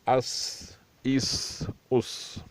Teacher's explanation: اس کے ادائیگی سخت اور پتلی جیسے سیٹی سی آواز نکلے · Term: سین